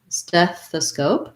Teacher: word stethoscope and again first syllable stress on stef stethoscope um we have the red tent vowel so it sounds like e and then the voiceless th